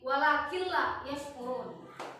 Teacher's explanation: Jadi nun matinya itu bertemu dengan la kan? Jadi kita langsung masukkan dari jangan walakin la, jangan walakin la, tapi walakin la yashkurun. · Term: idgham bila guna